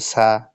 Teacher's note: সিনকে উচ্চারণ করার সময় ফিসফিস বাতাস বের করে হালকা করে পাতলা করে উচ্চারণ করতে হবে